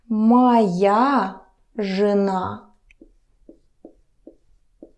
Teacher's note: remember the vowel reduction it's not je na it's something between e and uh